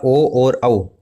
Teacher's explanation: ओ और औ, ये दोनों कंठ ओष्ठ के आधार पर उच्चारित हैं